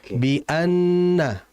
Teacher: Jadi diperhatikan bi'anna, jangan be'anna, jangan diimalahkan. Bi'anna, hukum nun tasydid itu adalah gunnah. Dan gunnah itu keluarnya dari hidung.